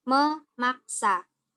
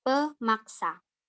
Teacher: fonem-fonem P, T, S, K pada awal morfem hilang akibat bertemu morfem men dan pen dengan bentuk dasar yang berawalan dengan fonem-fonem tersebut